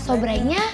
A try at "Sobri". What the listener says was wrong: Sobri, bukan sobrai.